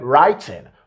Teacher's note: He didn't use the glottal stop to pronounce this word. He said writing.